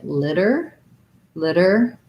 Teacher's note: americans will make this one into a flap t